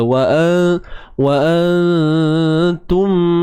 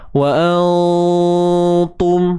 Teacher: Nun mati bertemu ta, kenalah kita tahu ta ni huruf yang nipis. Maka dengung yang dilakukan tu pun nipis saja. Jangan tebal.